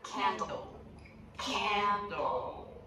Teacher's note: The one at the end of a word is a dark L, and that has a dark sound we make with the back of the tongue, pressing down and back a little bit.